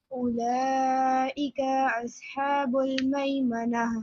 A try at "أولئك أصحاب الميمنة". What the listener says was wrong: Don't stretch the calf again.